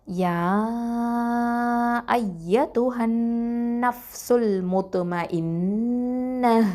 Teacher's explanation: அடுத்ததான் த தொம்மா தூ, அதாவது தா மர்பூத்தா இருக்குது. இப்போது இதை வக்ஃபு பண்ணும்போது என்ன பண்ணணும், இதை வந்து ஹ சுக்கூனா மாற்றி தான் நிப்பாட்டணும் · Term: ஹ சவுண்டு